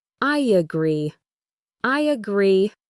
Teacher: Similarly, for a phrase like I agree, we add a tiny Y sound between the I and the A